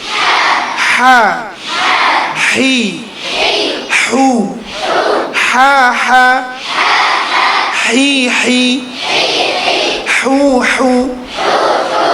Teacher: হাটা বলার আগে বাতাসটা আগে বের হবে, তারপরে উচ্চারণ হবে।